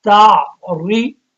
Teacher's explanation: اب را پہ زیر آ گئی تو اب اس کو باریک پڑھنا ہے